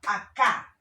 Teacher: la fuerza de voz está en la última sílaba. Yo no digo acá, sino acá. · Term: aguda